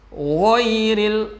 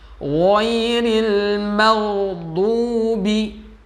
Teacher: Ghairil, gha itu makhrajnya tenggorokan paling atas. Rasakan dia ada kayak getaran riak ya, kayak kita mau membuang riak